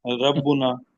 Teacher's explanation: مثلا ربنا میں را باریک پڑی